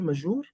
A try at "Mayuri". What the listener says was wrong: Mayuri. The J is a Y.